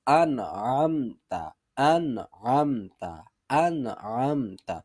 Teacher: تو حمزہ، انعمتا کا جو حمزہ ہے یہ انتہائی حلق یعنی اقصا حلق سے ادا ہو رہا ہے، اور عین جو ہے یہ وسط حلق سے، حلق کے درمیان والے حصہ سے ادا ہو رہی ہے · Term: عین اور حمزہ کے مخرج